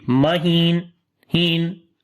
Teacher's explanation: So we say mahin. And then on the noon, tawassut quality again comes. We cannot finish this noon sound quickly.